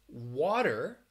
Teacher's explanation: water that is the flap t sound